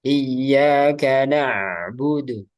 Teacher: Jadi ain itu dialirkan tapi sedikit.